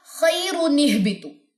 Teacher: حمزہ وصلی تو درمیان میں حذف ہو جائے گا، ڈراپ ہو جائے گا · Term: نون کتنی